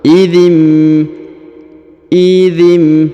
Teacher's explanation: zzi langsung ke huruf nun sukun ya alifnya Ini namanya ee Hamzah wasal ya atau Hamzah penyambung antara kedua kata maka dzi langsung ke nun sukun